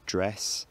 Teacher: the vowel in dress lowers to dress